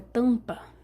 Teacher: o dígrafo vocálico é só uma vogal anasalada uma vogal que você pronuncia soltando o ar não só pela boca mas pelo nariz também